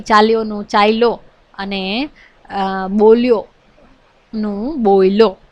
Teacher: ભૂતકૃદંતના ય ની હેરફેર થાય છે એનું સ્થાન પરિવર્તન થાય છે